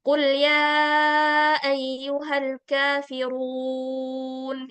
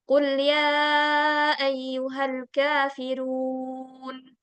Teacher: Yang pertama itu Ana baca tebal dan memang seharusnya tebal, dan yang kedua itu tipis.